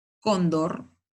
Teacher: Cóndor, la mayor fuerza de voz en la penúltima sílaba y la voy a tildar porque termina en R. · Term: palabras graves